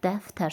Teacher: 2 dənə ə var, hər ikisi incədir. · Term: incə saitlər